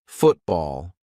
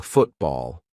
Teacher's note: When a syllable ends in T and it is followed by a consonant sound, we're going to use the glottal stop. For example, football.